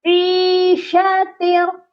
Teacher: عین کے ساتھ یا مدہ ہے، اس کو ہم نے ایک الف کے برابر لمبا کرنا ہے ، لیکن شین کے اوپر کیا ہے، صرف حرکت ہے اور